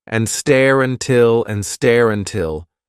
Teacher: No, it's not a vowel to vowel link. It's an R to vowel link, really.